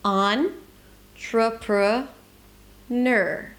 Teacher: So there is actually no vowel between the N and the R